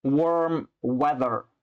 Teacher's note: keep the W sound at the beginning nice and rounded and the R in weather nice and smooth